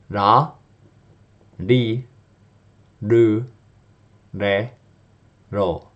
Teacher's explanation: your tongue almost just sort of flicks the back of your teeth there, but it doesn't actually really come into contact